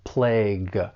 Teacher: that final G-U-E, it's going to be pronounced with an aspirated G sound, plague. But often people may use this verb as, well, the past participle, in which case it's going to end with the final D sound.